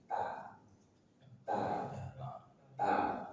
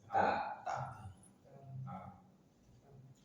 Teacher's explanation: Ada huruf ta, ujung lidah dari penguat atasnya bertemu dengan gusi gigi seri atas. Ta, dan dia tarkik tipis.